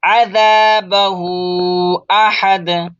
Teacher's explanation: हा के ऊपर उल्टा पेश है और मद खींचेंगे